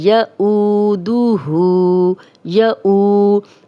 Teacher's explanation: یعودہ، یعو، یہ حمزہ ہے، یہاں پہ ہم واو مدہ جو ہے لمبا کریں گے اور حمزہ کے ساتھ پڑھیں گے۔ او، جزم والی واو پیچھے حمزہ پہ پیش، 2 حرکات لمبا کریں گے